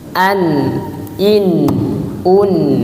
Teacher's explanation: Huruf nun sama, makhrajnya ada dua. Yang pertama ujung lidah bertemu dengan langit-langit.